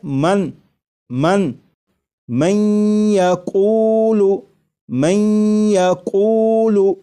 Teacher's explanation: یہاں پر دیکھیے گا یہ نون ساکن ہے، نون ساکن کے بعد جب یا آ جائے تو نون ساکن کو یا میں ادغام کر کے پڑھیں گے، ملا کر پڑھیں گے، اور نون ساکن کو یا میں ادغام اس طرح کریں گے کہ غنہ بھی ہو